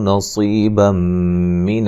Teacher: بم نون تنوین کا ادغام مع الغنہ ہے